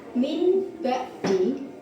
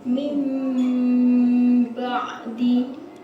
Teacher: Apabila ada nun sukun atau tanwin bertemu dengan huruf ba, maka huruf bacaannya disebut iqlab. Cara membacanya adalah bunyi nun sukun atau tanwin berubah menjadi bunyi mim sukun dan dipanjangkan dua harakat.